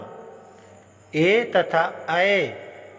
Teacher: ए तथा अय का उच्चारण स्थान कंठ तालु है। इन वर्णों का उच्चारण कंठ तथा तालु से किया जाता है, इसलिए इन्हें कंठ तालव्य कहा जाता है।